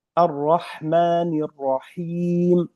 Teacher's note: Him, bukan Ar-Rahim. Ini huruf H, harus jelas. Karena sifatnya sifat huruf H lemah, tidak kuat.